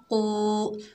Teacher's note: कौफ हुर्फ मुस्तालिया में से है, मोटा अदा होगा